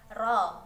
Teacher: Ro, bacaan ro tafhim sebab terdapat ro dengan harokat fathah maka ro-nya dibaca tebal